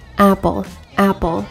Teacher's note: the north american english ah as an apple for example has a more front and low position in the mouth with unrounded lips and a rigid tongue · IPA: /æ/